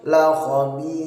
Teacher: Karena rok waqaf, rok diwaqafkan karena sebelumnya didahului oleh kasroh, dibaca tipis, harus meringis. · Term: rok tarqiq